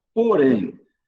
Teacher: O M tem som de Y. Então, em porém, nós temos uma semivogal.